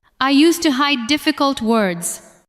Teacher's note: Stress hide and difficult words.